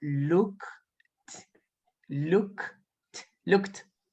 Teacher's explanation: look termina en sonido de K, look. Es decir, que la ed va a sonar como una T. Así que yo digo look, look, looked. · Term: la ed suena como una T